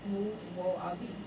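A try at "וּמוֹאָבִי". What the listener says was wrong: No, it's Wu Mo Abi. It's Wu Mo Abi. you're saying Mu.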